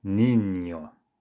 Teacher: it's almost as if a letter Y, a Y sound, has been added after that second letter N.